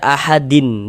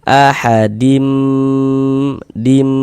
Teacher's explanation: di bagian dim, nah, itu suaranya itu kita tahan, kita panjangkan sejenak. Ahadim, dim, nah, kita tahan. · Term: idgham bi gunnah